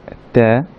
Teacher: ত্যাটা বলতে সময় হালকা একটু বাতাস থাকবে